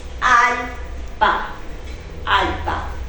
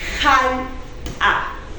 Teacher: Como en quechua chanca no hay consonante glotal, no hay consonante aspirada